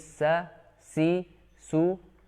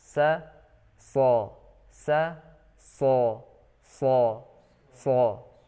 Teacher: Sin dengan shad ini hanya dibedakan dengan sifat itbaq dan isti'la, atau hanya dibedakan dengan sifat tebal. Maka ketika kita mengucapkan sin ya dengan tipis, sa, si, su, apabila kita tebalkan suaranya maka akan menjadi huruf shad. Sa atau sin, kemudian kita tebalkan sa, so, sa, so, so.